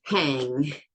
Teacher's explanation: I'm closing off the mouth, the air that comes through the mouth at the back of the mouth. And so it can only come through the nose.